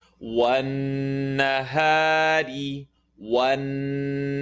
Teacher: Ra with the line on the bottom. It's going to be light.